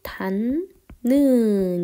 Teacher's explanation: 뒤에 니은이 있다 보니까 디귿이 어떻게? 니은으로 바뀌게 된 거죠. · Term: 비음화